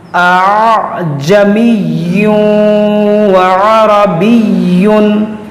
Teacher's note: اور عین کو نرمی سے پڑھیں گے اور را کو موٹا کریں گے